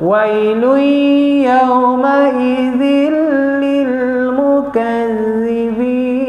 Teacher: Kita masukkan dia idgham kepada harfu ya.